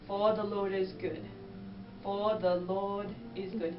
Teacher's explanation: R at the end of a word, you're gonna drop. So for example, for, you're just gonna drop it.